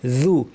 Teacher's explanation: যু খেয়াল করে স্পষ্ট এবং পাতলা রাখতে হবে। অনেকে আউযু এটা ভারী করে আউযু এরকম বলেন, যু না, যু।